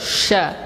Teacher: Nah, kemudian yang harus kita perhatikan di huruf sya ini, dan ini banyak menimpa, kesalahan ini banyak menimpa kalangan kaum muslimin, yaitu ketika mereka menyebutkan huruf sya, bibirnya dimonyong duluan